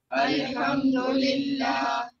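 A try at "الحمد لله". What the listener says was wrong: Yeah, ha must be, this ha must be sharper. Alhamdulillah.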